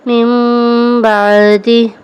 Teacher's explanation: اور اقلاب کے ہجے اس طرح کریں جیسے میم نون زیر من، با عین زبر با، من با، دال زیر دی، من بعدی۔ نون ساکن کے بعد با ہے تو ہم نے اس کو میم سے بدل کر اخفاء کیا